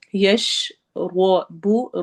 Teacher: روا کو ہم نے موٹا کر کے پڑھنا ہے کیونکہ اس کے اوپر زبر آ رہی ہے۔